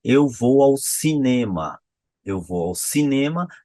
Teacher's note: a minha tônica tá lá no final